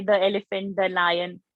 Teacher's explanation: So the tip of the tongue is coming between the teeth.